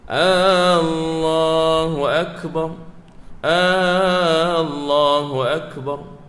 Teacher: Panjang pada hamzah di awal kalimah Allah.